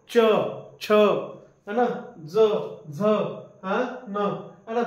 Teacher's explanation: तुमची जीभ आहे ते कुठे स्पर्श करत आहे टाळूला स्पर्श करत आहे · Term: तालव्य